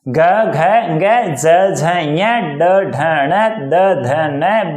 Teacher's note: इनका उच्चारण करोगे तो हमेशा गूंज उत्पन्न होगी। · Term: घोष वर्ण